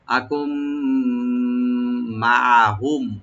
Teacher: ইযলাম আকুম মাহুম, আকুম মাহুম, এখানে হামজাকে রাইট দিবেন, কাফের পরে যে নুন সাকিন আছে, তো নুন সাকিন পরে যেহেতু মিম আসছে, তো নুন সাকিনটা মিমের সাথে সংযোগ করে গুন্না সহকারে পড়া হবে, এদগাম উইথ গুন্না।